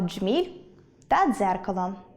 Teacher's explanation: звуки [д] і [ж] та [д] і [з] так тісно дружать, що коли стоять у слові поруч, то стають одним єдиним звуком